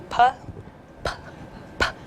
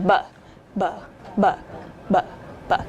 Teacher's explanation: the difference is that p is voiceless, whereas b is voiced · But so you're going to notice a puff of air when you say both p and b, but you're going to notice a stronger puff of air when you say p. So try saying p, p, p, and then b, b, b, b, b.